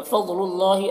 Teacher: اللہ کو پر پڑھنا ہے، کھڑا زبر ہے جو الف مدہ کی طرح